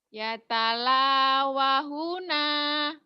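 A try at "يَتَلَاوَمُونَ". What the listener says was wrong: Kalau H gede bulatnya. Ini kan kecil. Cilik ya, wong cilik. Itu yang kecil mim. Yang gede H ya. Yang talawamuna.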